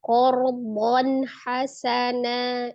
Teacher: Sementara di sini fathah tanwinnya bertemu dengan huruf ha. Ha adalah salah satu huruf al-halqi, huruf yang keluar dari tenggorokan, tepatnya tenggorokan tengah. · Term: izhar halqi